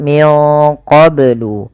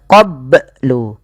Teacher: Kemudian melafal qoblu ini bnya harus dipantulkan karena ia ada bacaan qalqalah maka bacanya adalah minqoblu.